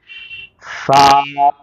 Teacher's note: سا جب ہم پڑھیں گے تو ہماری جو زبان ہے وہ دونوں دانتوں سے تھوڑا سا باہر نکلیں گی۔